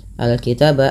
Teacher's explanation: alif lam qamariyah, dibaca dengan jelas suara lamnya.